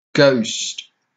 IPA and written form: ɡəʊst (ghost)